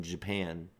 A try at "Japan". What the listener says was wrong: it sounded like he's a Z in there. Japan.